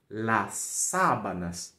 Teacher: vai ser sempre oral sempre abrindo